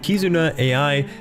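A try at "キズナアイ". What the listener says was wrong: Isn't it pronounced Kizuna I? But, because she's like not an AI.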